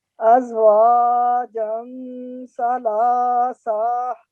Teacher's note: The tha is one of huruf ikhfa. So we have to create a concealed nasal sound, means hiding this tanween sound.